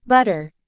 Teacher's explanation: the tip of the tongue taps against the alveolar ridge, the ridge behind the upper front teeth, quickly and briefly, creating a short interruption in the airflow. This tapping sound is what gives the R sound its distinctive quality. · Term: tap or flap